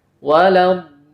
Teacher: mad lazim kilmi musaqqal pada kata waladdo dibaca 6 harokat dan usahakan disertai dengan nabr, hentakan suara.